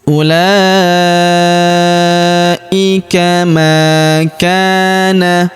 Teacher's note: huruf ma kita panjangkan dua harakat karena terdapat alif di depannya